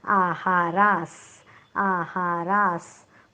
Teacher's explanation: आहारास, तिन्ही अक्षर दीर्घ आहेत. रा नंतर विसर्ग आहे, विसर्गाच्या पुढे आलेला आहे स, म्हणून विसर्गाचा उच्चार हलंत स करणार आहोत. उच्चार होईल आहारास, आहारास.